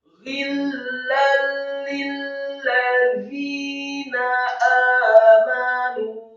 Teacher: Za yang tipis, lidahnya agak keluar sedikit